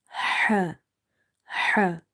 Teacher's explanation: Ha is the halkia letter, throat letter, and it's from the middle of the throat. In order to pronounce the ha correctly, you need to open the mouth wide, and you have to exhale the air out. Ha, ha. Never read it like the other simple ha, otherwise it can change the meaning.